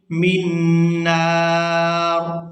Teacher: پر بھی آیت مکمل ہو رہی ہے، وقف کریں گے تو وقف کی صورت میں را جو ہے یہ ساکن ہو جائے گی